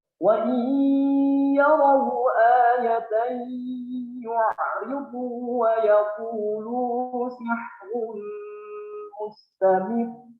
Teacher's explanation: Roknya di situ ada di ujung ayat. Sebelumnya kasroh, maka hukumnya menjadi tarfiq. Tapi roknya itu ada tasydid.